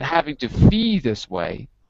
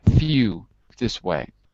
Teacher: The L's become kind of like a U, like ooh, like feel, ew, ew.